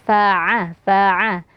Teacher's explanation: jangan sampai ada suara dari hidung jadi dia keluar dari tengah tenggorokan